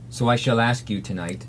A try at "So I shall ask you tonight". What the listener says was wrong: Ask. Good. Too open. Flatten the tongue more.